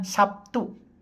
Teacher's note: Dalam bahasa Indonesia yang lazim dikatakan Sabtu, di mana terlihat bunyi B berubah menjadi P sebagai akibat pengaruh bunyi T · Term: asimilasi